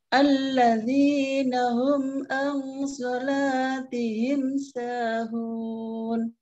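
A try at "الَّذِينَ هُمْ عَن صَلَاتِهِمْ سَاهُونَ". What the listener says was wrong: Ya, humnya sering juga salah ya. Jadinya hum bukan home ya, tapi hum. Domah itu hu, bukan ho. Nah, ini ya logat kadang pengaruh ya.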